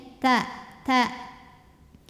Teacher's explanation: adalah dari ujung lidah bertemu dengan tempat tumbuh dua gigii atas ta ada angin saat berharakat tapi anginnya tidak berlebihan keluarnya bareng sama sama keluarnya bunyi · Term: huruf ta